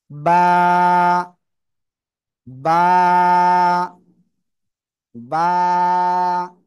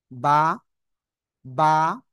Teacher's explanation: দুই ঠোঁট থেকে। ইয়েস, দুই ঠোঁটের ভিজা অংশ থেকে বা অক্ষরটি উচ্চারণ হয়।